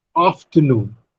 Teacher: between off and t, off receives greater breath force than t. Off receives greater breath force than t, but off receives lesser breath force than noon. · Off receives greater breath force than t, but off receives lesser breath force than noon. So noon has the primary stress and off has the secondary stress. · And out of these three syllables, noon receives greater breath force than off and t. Therefore, we say that this has primary stress.